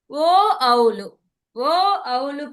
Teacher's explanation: ఓ ఔలు పలికేటప్పుడు కంఠము రెండు పెదాలు కలుస్తున్నాయి, అందుకని కంఠోష్ట్య అన్నాం